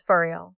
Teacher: When you look at the phrase for real, it has 2 clear words, but when we are talking fast or expressing shock, we drop the O sound in for completely. It just becomes an F sound attached to the word real.